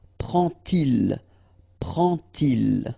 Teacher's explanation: you won't pronounce it like D to make the liaison, but you will pronounce it like T